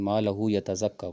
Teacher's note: تو حمزہ کے علاوہ کوئی اور حرف ہے، جیسے ما لہو یتزکیٰ، قرآن پاک میں آتا ہے نا ما لہو یتزکیٰ، تو اب جو ہو کی مد ہے وہ لمبی زیادہ نہیں ہو سکتی، کیونکہ ما لہو یتزکیٰ نہیں آپ پڑھ سکتے۔ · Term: مد صلہ صغریٰ